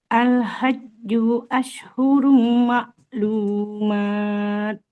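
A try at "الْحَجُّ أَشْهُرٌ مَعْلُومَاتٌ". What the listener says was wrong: Nah, jimnya nggak boleh panjang. Dhamma nggak ada wawunya. Al-hajju ashhurum ma'lumat. coba Ibu huruf shin. Dia seperti sya, sebelum Nah, huruf shinnya Ashhurum, jangan ashurum. Tengah lidahnya ke langit-langit atas. Ashhurum lagi jadi bukan as tapi ash. Nah, kayak asyhadu alla ya. Syifa bertamasya. Al hajju ma'lumat. Huruf taknya.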